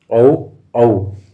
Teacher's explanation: औ और औ कौन सा है, कंठ एवं ओष्ठ, औ औ तो क्या है, कंठोष्ठ्य।